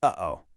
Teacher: You know that abrupt stop right in the middle, where your vocal cords suddenly close and open? That exact stop is the ninja-like hamza. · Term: glottal stop